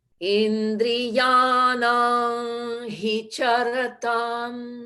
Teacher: that anusvara will change from an M to an NG, if you will, the G being silent